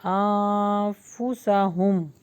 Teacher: اخفا کا آپ کو قاعدہ یاد ہوگا کہ جب بھی نون ساکن یا تنوین کے بعد 15 حروف میں سے کوئی ایک لیٹر آ جائے گا تو وہاں پر ہم نے اخفا کرنا یعنی چھپا کر ناک میں غنہ کرنا ہے